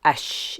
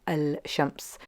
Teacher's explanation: if it's a sun letter, then we don't pronounce that lam and we move straight to the next letter.